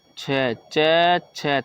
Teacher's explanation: तालव्य ताला मतलब तालू से बोले जाते हैं